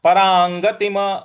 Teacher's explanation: यहां पे अनुस्वार के लिए लाना है तो परांगतिम परांगतिम परांगतिम म के नीचे हलंत है तो परांगतिम म पर हमको रुक जाना है